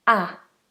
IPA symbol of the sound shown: æ